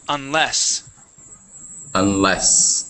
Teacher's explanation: The stress is at the end of the word, unless. Unless.